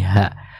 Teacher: huruf H yang keluar dari tenggorokan bagian bawah